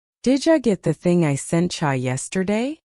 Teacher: The sounds blend. Did you becomes did ya. Sent you becomes sent ya.